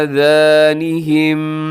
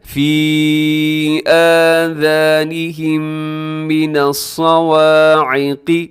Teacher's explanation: یہاں میم ساکن کے بعد پھر میم آ رہا ہے تو آپ نے یہاں پر کیا کرنا ہے، آواز کو ناک میں لے کے جانا ہے